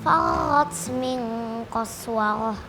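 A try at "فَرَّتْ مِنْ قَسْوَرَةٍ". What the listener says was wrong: Ra. Jangan tekannya jangan di tenggorokan. Ra, lidahnya yang diangkat. Ra.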